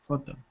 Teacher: You do pronounce the H, yes, but the stress is on the second syllable.